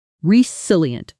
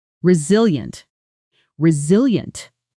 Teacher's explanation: Resilient, strong on the second syllable.